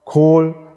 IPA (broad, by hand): ˈkʰoːl